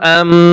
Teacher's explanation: এখন ইকফায়ে শাফি আর ইকলাব গুন্না, এই দুইটা গুন্না ঠোঁট ফাঁকা রেখেও করা যায়, ঠোঁট মিলিয়েও গুন্না করা যায়, কিন্তু গুনগুন আওয়াজে গুন্না আপনাকে করতেই হবে।